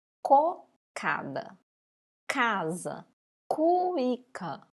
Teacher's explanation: Esse C, ele está sendo pronunciado com o som k, parecendo que está vindo um pouquinho da garganta arranhando